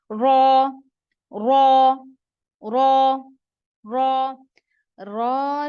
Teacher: रा में जो है जबान की नोक तालू की तरफ ऊपर की तरफ उठती है